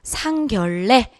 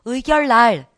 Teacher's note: 니은과 니을로 얘네들이 결합이 되어 있지만 얘네들이 발음상 어떻게 된다? 니은으로 발음되는 예외적인 애들입니다.